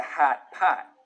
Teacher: sound moves forwards towards where trap used to be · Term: chain shift